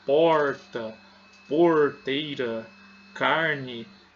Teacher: Esse R dobrado, onde nós levamos a ponta da língua ao céu da boca